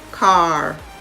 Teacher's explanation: Can you hear the A flowing into the R? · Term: R controlled vowel sounds